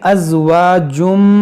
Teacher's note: यहाँ तनवीन के बाद मीम है तो यहाँ पर इदगाम करेंगे